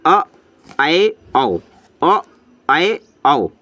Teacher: अर्ध विवृत स्वर, अर्ध का मतलब आधा खुला, आधा खुला हुआ, तो अ, आए, आओ, अ, आए, आओ, इनकी संख्या 3 है।